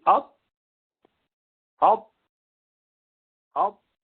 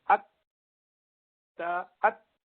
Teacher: ان سارے حروف میں آواز اچانک سے بند ہو جاتی ہے، یہ شدید حروف ہے